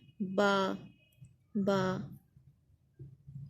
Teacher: जो बा है वो दोनों होंठों के तर हिस्से से अदा होता है